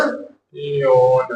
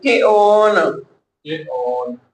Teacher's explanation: ਕਹਿ ਦਿੱਤਾ ਤੋ ਕਿ ਓਨ ਕਿਆ ਪਾਠ ਕਰਨਾ ਕੇ ਓਨ ਕੇ ਲੰਬਾ ਨਹੀਂ ਕਰਨਾ ਕਿ ਓਨ ਕਿ ਓਨ ਹਲਕਾ ਜਿਹਾ ਸਿਹਾਰੇ ਦੀ ਮਾਤਰਾ ਦੀ ਕਿ ਓਨ ਇਸ ਦਾ ਪਾਠ ਹੈ ਕਿ ਓਨ ਉਸ ਨੇ ਕੀ